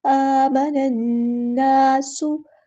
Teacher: देंगे, आमनन, इस तरह हमज़तुल वस्ल हमारा ड्रॉप हो जाएगा और लाम जो है वो लाम शम्सिया है तो इसको पढ़ेंगे नहीं